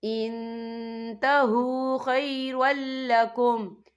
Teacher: نون ساکن کی آواز کو ناک میں چھپائیں گے. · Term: اکفا